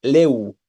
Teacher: le termina en vocal humilla Inicia con sonido vocálico entonces Esta es una sola sílaba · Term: sinalefas